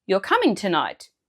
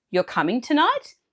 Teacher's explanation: without changing a word, you can easily make it a question just by raising your tone at the end.